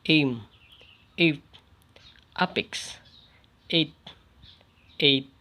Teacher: The higher mid-front vowel E